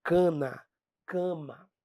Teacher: Esse cana, se você pronunciar aí, você vai perceber que o som, ó, tá meio passando pelo nariz. Parece que você está falando meio gripado. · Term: vogal nasal